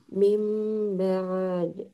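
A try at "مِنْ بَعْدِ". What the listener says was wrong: Nah, ditahan. Mim. Mim dipanjangkan lagi sedikit. Nah, jadi ainnya di coba di gitu ya. Di tengah tenggorokan. Mimba. Jadi dialirkan dia di situ, di posisi makhrajinya ain.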